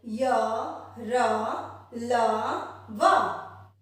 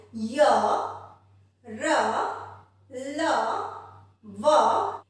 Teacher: इन वर्णों का उच्चारण करते समय हमारी जिह्वा कहीं तालु से लग रही है, कहीं दंत से लग रही है, कहीं मूर्धा से लग रही है, पर ये जो व्यंजन है इनका उच्चारण करते टाइम हमारी जिह्वा पूर्णतः नहीं लग रही है, पूरी तरह से तालु को भी टच नहीं कर रही है, पूरी तरह से दांत को भी टच नहीं कर रही है। ये बोलते समय, इनका उच्चारण करते समय हमारी जो आवाज है वो अंदर से निकल कर आ रही है। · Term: अंतस्थ व्यंजन